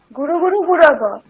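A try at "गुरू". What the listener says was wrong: হ্যাঁ, গুরু। গুরু নয়, দীর্ঘ উকার, গুরু।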